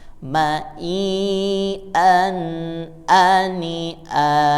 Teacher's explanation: A-nya dibaca dengan mad iwad ya. Jadi mad iwad itu dipanjangkan 2 harokat. Yang awalnya an menjadi a karena ada alif atau mad di akhir.